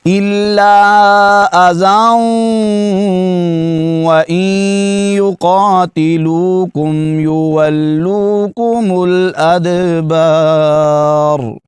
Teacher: جب ملا کر پڑھیں گے، ادغام کریں گے، ادغام میں یرملون ہوگا تو یہاں پر غنہ کے ساتھ ہوگا